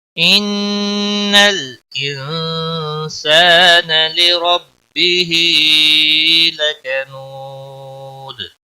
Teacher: إن نون مشدد پر گنہ ہوگا